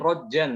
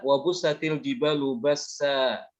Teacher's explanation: Ini kalau berhenti di sini diwakafkan dia dibacanya bukan rojan ya, tapi roja. Tanwinnya hilang. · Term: mad iwad